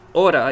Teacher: the way you pronounce T between two vowels in English is exactly the same sound you need for a soft R